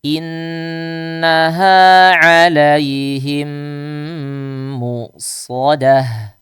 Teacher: ketika kita membaca innaha ditahan atau gunnahnya dipanjangkan, gunnah mutawwalah.